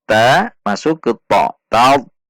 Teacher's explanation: Ada tekanan dan langsung menaikkan pangkal lidah karena sifat dari huruf ta.